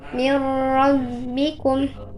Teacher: Pada waktu mengidghamkan, suara harus ditasydidkan kepada huruf lam dan ro seraya menahan sejenak.